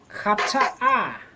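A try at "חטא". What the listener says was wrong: And there's no vowel associated with the final aleph. It's just a placeholder and it's silent. Chata.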